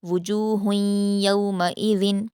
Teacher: وجوہن کی تنوین کے بعد یا آیا ہے تو اس لیے یہاں پر ہم ادغام غنہ کے ساتھ کریں گے۔ وجوہ یومئذ، یومئذ کی تنوین کے بعد خا ہے تو اظہار ہوگا۔